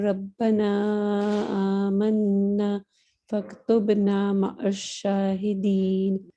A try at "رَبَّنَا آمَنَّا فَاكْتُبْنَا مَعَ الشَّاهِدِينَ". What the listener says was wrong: اس میں بس ایک چیز یہ دیکھو جو آمنا میں نا پر دو حرکہ ہونا چاہیے, تھوڑا چھوٹا ہو گیا. ربنا آمنا, اس طرح کر کے چھوڑ دیں. اور وہ یہ قاف کہیں کہیں پر ٹھیک نہیں ہوا, باقی جگہوں پہ ٹھیک تھا. ٹھیک ہے نا, قاف کا ایک دیکھنا ہے.